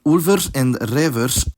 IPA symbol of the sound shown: v